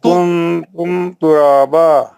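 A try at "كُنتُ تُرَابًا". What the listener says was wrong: तुम नहीं है तू।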